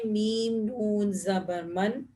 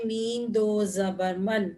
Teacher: جب ہم پڑھتے ہیں میم نون زبر من اور ہم پڑھتے ہیں میم دو زبر من، دونوں کی آواز ایک جیسی ہے